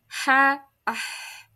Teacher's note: suaranya tipis ya, tidak menebal dan tidak mengangkat juga pangkal lidahnya. Maka ini adalah istifal.